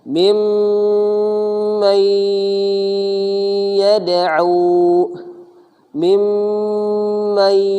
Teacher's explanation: Artinya kalau yang kemarin kita pelajari izhar itu suara nunnya dibaca, gitu. Kalau ini suara nunnya tidak dibaca alias melebur atau ke bahasa lainnya menghilang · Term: idgham bi gunnah